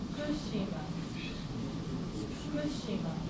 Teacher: there is a pitch fall after fu.